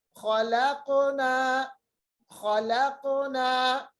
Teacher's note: قاف کی آواز کو ہم نے مخرج سے واپس لایا، اس لیے کیونکہ قاف ساکن ہے اور قاف حروف قلقلہ میں سے